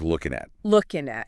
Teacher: notice how the N sound at the end of looking blends in with the next word. Right. If it starts with a vowel. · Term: linking